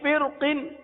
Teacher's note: را ساکن کے آگے قاف، حروف مستعلیہ میں سے را کو پر پڑھیں گے